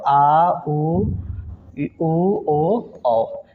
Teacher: जिस स्वर के उच्चारण में जीभ का पिछला भाग काम करता है उसे पश्च स्वर कहते हैं